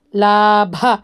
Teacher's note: ಮಹಾಪ್ರಾಣ ಅಕ್ಷರ, ಗಾಳಿ ಹೊರಗಡೆ ಬರಬೇಕು. ಮೀನ್ಸ್ ಏರ್ ಹೊರಗಡೆ ಬರಬೇಕು.